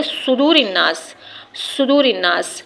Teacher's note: صاد آپ اس طرح سے ادا کریں گے جب زبان کی کروٹ، زبان کا کنارہ نہیں، زبان کی کروٹ جب اوپر کے دانتوں سے، جب اوپر کے سائیڈ کے دانتوں سے لگتی ہے، زبان کی کروٹ جب اوپر کے سائیڈ دانتوں سے لگتی ہے تو حروف صاد ادا ہوتا ہے